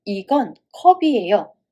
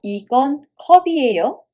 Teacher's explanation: Did you hear how I raised my tone at the end just like a question?